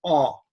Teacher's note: if I put my tongue back farther, it's aw.